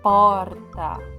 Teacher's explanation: Quando nós falamos porta, a sílaba mais forte é o por. Então, por isso que ela é a sílaba tônica.